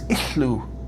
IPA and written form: iɬːu (illu)